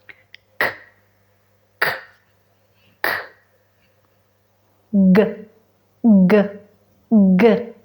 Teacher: Muy bien, entonces abrimos un poco la mandíbula, elevamos la parte posterior de la lengua a la parte suave del paladar. Lo tapamos totalmente, deteniendo el aire. Y cuando bajemos la lengua, el aire se libera.